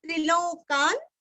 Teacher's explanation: त्रिलोकान, अभी त्रिदीर्घ और दो ल का उच्चार, त्रिलोक, त्रिलोकान्य, त्रिलोकान आधा न, का के ऊपर आघात देके आधा न बोलना है